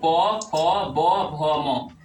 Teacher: होठ यानी ओष ओष की सहायता से बोले जाने वाले वर्ण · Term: ओष्ठ वर्ण